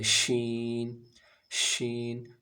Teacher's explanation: شین میں تھوڑی سی آواز، تھوڑی سی تفشی ہے، پھیلتی ہے تھوڑی سی، سیٹی کی آواز نہ ہو س کی طرح، سین کی طرح، بس آواز پھیلے، شین، شین،